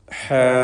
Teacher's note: എന്നാൽ ഇതേ പദത്തിൽ തന്നെ ഹ എന്ന അലിഫ് ദീർഘം ശ്രദ്ധിച്ചു നോക്കൂ. ഹ നേർവിപരീതമായ ഇസ്തിഫാലിൻ്റെ ഹർഫാണ്. തർക്കീഖ് ചെയ്ത് ഉച്ചരിക്കേണ്ട അക്ഷരമാണ്. അതിൻ്റെ ദീർഘാക്ഷരമായ അലിഫിലും തർക്കീഖ് നിലനിൽക്കുന്നു.